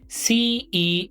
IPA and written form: siːs (cease)